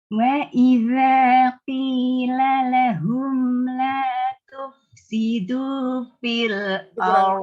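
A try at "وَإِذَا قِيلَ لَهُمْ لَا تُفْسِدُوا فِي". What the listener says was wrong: kurang lurus Ibu. Tufsidu diluruskan vokalnya.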